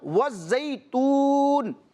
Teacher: لیکن جب ہم اس آیت مبارکہ کے اختتام پر رکیں گے، وقف کریں گے، تو وقف کرنے کی حالت میں یہ نون متحرک کیا ہو جائے گا؟ ساکن ہو جائے گا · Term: سکون عارضی